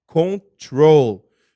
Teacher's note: dá para você observar que a sílaba tônica é a segunda